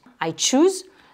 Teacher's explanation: Mais en anglais, c'est rarement le son che, c'est en général le son tche, donc comme si on avait un petit te devant